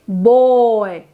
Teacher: When we combine two vowels resulting in a complex vowel, then only we can produce such a sound. You should notice that your mouth shape changes as you produce this vowel, boy. So demonstrating the dynamic reconfigurations that typify complex vowels.